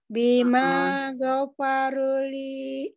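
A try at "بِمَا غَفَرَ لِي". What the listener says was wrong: Bima ghafaroli, bukan go tapi ro. Ghafaroli. Li.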